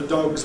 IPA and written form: dɒgz (dog's)